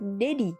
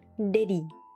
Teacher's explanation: Kenapa disebut Flap karena lidah kamu cuman sekilas doang nyentuh bagian atas mulut